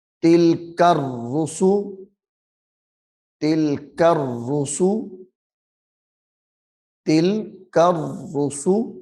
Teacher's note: زیر تل، کاف را زبر کر، تل کر، را پیش رو، یہ تا جو ہے اس کو لام ساکن کے ساتھ ملانا ہے اور پھر کاف کو را مشدد کے ساتھ ملانا ہے، سختی کے ساتھ پڑھیں گے ، تل کر، را پیش رو، سین پہ سو، تل کر